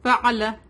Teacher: عین come from the middle part of the throat